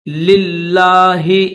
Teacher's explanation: 2 لام ہے، پہلا جو لام ہے اس کے نیچے زیر ہے، دوسرا جو لام ہے اس کے اوپر تشدید بھی ہے اور کھڑا زبر بھی ہے، تو اس کو تھوڑا سا کھینچیں گے